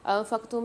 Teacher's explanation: انفقتم میں نون ساکن کے بعد دوبارہ سے فا آ رہی ہے، فمال غنہ کے 15 حرفوں میں سے، یہاں بھی غنہ کر کے پڑھیں گے